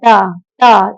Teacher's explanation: और टा, ऋतु रसना मूर्धा, टा टा, जब आप टा बोलेंगे तो आपकी जीभ बैंड होके आपके तालव्य के ऊपर लग के बैंड हो जाएगी, तो ऋतु रसना मूर्धा, तो ट क्या हो जाएगा बेटा आपका, ट आपका मूर्धा से बोला जाने वाला अल्प प्राण अघोष व्यंजन हो जाएगा, ठीक है।